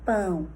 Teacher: Por exemplo, a palavra pão, eu tenho que fazer um movimento rápido, ou seja, a variável tempo. É uma vogal nasal, então eu tenho que produzir uma elevação da língua na parede posterior da faringe com uma discreta abertura para a passagem do ar pela via nasal. E aí, imediatamente, eu tenho que fazer uma protrusão de lábio.